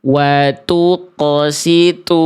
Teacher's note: Kenapa thnya bisa berubah menjadi huruf ta? Karena th-nya dibaca jadi tipis. Kenapa huruf th-nya bisa jadi tipis? Karena pangkal lidahnya tidak terangkat. Itu kesalahan yang a karena berubah tipis menjadi huruf ta.